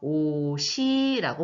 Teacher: 예를 들어서 옷이 예쁘구나 할 때 옷이, 옷이라고 하는 단어에 뒤에 이라고 하는 조사가 붙었죠. 그래서 앞에 받침인 시옷이 모음으로 시작된 이로 옮겨가서 옷이라고 발음이 되는 것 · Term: 연음